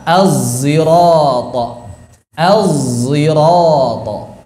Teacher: Sod jahr atau zai tebal.